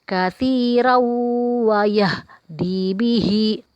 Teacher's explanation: Ada tanwin bertemu dengan huruf waw. Kita baca dengung atau kita panjangkan.